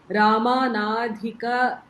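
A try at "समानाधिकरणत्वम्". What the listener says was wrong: It's not Rama. It's not Rama. Rama later, after the bhajans. It's Sama. Samanadhikaranatvam.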